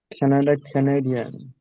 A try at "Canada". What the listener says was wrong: কানাডা, কানাডা না, কানাডা। খ্যাতে stress দিতে হবে।